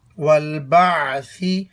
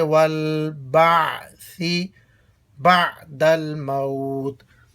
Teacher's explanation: سا کو نرم پڑھیں، اس کو سین نہ بنائیں، والبعثی نہ ہو، سیٹی کے ساتھ نہیں ہے بلکہ نرم ہے، اور زبان کی نوک اوپر والے دانتوں کے کنارے پر لگا کر اس کو ادا کریں گے، والبعثی بعد الموت۔